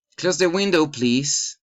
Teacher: Request rise in intonation.